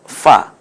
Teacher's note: নিচের ঠোঁটের পেট এবং সামনের দাঁত মিলে উচ্চারণ হবে ফা